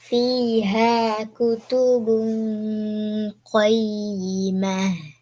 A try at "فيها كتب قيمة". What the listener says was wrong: قيمة. கடைசியில ஹர் sound நிப்பாட்டணுமே, வருது இல்லையே?